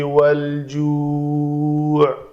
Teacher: لام کو قلقلہ ہونے سے بچائیں گے، لام کے مخرج کو پکڑ کر آگے جیم کو ادا کریں گے